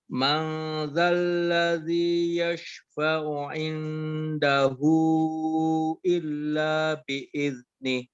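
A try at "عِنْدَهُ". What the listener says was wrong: Oke, pada kata indahu itu dibacanya ke huruf ang. Aya, jangan ke in, jangan ke nun ya.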